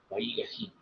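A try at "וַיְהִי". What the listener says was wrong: Okay, it's actually Vaihi because it's a short form. So this shwa is silent. So Vaihi.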